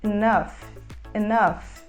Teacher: a gente fala com aquele som mais próximo do E fechado. Enough, enough.